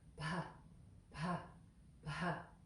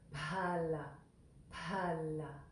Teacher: So there's that H after the P. So that's one letter, and it's pronounced with a puff of air.